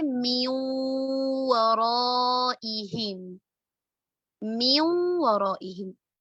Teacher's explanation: अब ये असल में था मिन और वराइहिम, लेकिन नून साकिना के बाद मुमिन में से वाव मौजूद है, तो हमने नून साकिना को वाव मुतहर्रिक के साथ मिला दिया, मर्ज कर दिया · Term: इदगाम बी गुन्ना